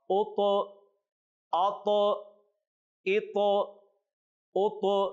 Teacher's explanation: یہاں طا میں بھی ہم نے قلقلہ کیا ہے، یعنی طا کو ظاہر کر کے پڑھا ہے، اس لیے کہ طا جو ہے یہ حروف قلقلہ میں سے ہے۔